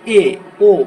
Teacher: আচ্ছা, অর্ধ সংবৃত কি, মানে খুব বেশি চওড়া হয়েও খুলছে না, আবার খুব সরু করেও মুখটা খুলছে না, যেমন এ ও মাঝারি আকৃতিতে মুখটা খুলছে, সেই জন্য এটা অর্ধ সংবৃত